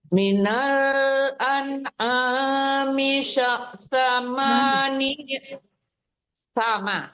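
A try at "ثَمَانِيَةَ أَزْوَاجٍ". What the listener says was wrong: Sa ujung gigi jangan sya tapi sa. Salah lembut ya, jangan ada sisa s-nya itu ya.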